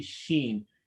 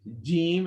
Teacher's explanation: sheem or a sheen are pronounced on the exact same area the only difference between the two is that in the sheen you don't touch the top part of your mouth but in a gene it touches it